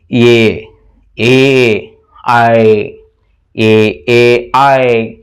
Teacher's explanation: ಕಂಠ ಮತ್ತು ದವಡೆಗಳ ಸಹಾಯದಿಂದ ಉದ್ಭವ ಆಗುವುದು ಕಂಠ ತಾಲವ್ಯ